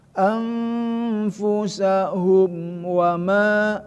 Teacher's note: mim bertemu sama wau ya itu izhar syafawi tidak Boleh didengungkan